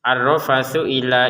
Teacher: Kemudian ro-nya ditekan, di sini ada tasydid. Ar-rafathu ila ini langsung saja karena di sini tidak ada wawu ya.